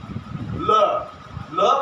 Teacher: पार्श्विक, जिसको पास में से हवा निकल जाए, ल बोलते तो ये शब्द बिल्कुल पास में से इसके मुंह से, मुख विवर से आवाज निकल जाती है, इससे पार्श्विक ल कहते हैं।